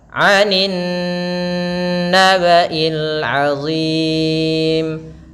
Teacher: Anin naba'il, tahan suara nunnya sepanjang 2 harakat, dia bacaan gunnah. Anin naba'il azim, panjangkan huruf zim karena di sini ada mad arid disukun. Kita boleh memanjangkan pada lafaz zim 2 harakat, 4 harakat atau 6 harakat.